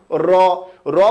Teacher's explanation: আমাদের জিহ্বার আগা বা জিহ্বার আগা কেঁপে ওঠে আপনি বলুন র র বললেই দেখবেন যে জিহ্বার আগা দুই তিনবার একটা বাড়ি দিয়েছে কম্পন সৃষ্টি করেছে এইজন্য র কে আমরা কি বলি কম্পনজাত ধ্বনি এরপরে আরেকটা আছে